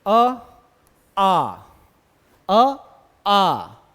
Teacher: मुख ज्यादा खुल रहा है आ में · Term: विवृत